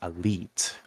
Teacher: family um it's actually spelled a l i i t so I say it Elite with the I being longer because it's doubled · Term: vowel length